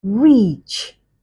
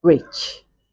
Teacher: there's a difference in length and there's a difference in quality regarding vowel number one and vowel number two